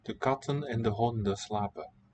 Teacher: in these last two words, honden and slapen, we don't hear the N.